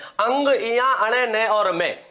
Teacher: इन्हें कहां से बोला जाता है इन्हें बोला जाता है नासिका से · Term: पंचम वर्ण